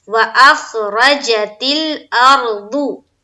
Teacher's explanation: یہاں بھی دیکھیے واو کو جلد ادا کریں گے اور حمزہ کو خا سے ملائیں گے، کیونکہ خا کے اوپر جزم ہے، اور را کو زبر کے ساتھ پڑھیں گے لیکن پر پڑھیں گے، کیونکہ را کے اوپر زبر ہے، زبر یا پیش ہو تو ہم پر پڑھیں گے، موٹا کر کے پڑھیں گے۔